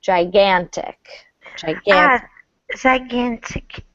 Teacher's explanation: You can stress the second syllable a little bit more.